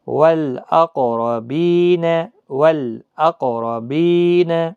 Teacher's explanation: اسی طرح سے یہاں پر والاقربین، والاقربین، یہ لام باریک پڑھا جائے گا، موٹا نہیں پڑھا جائے گا۔ والاقربین، دیکھو لام پڑھا جا رہا ہے اظہار قمری میں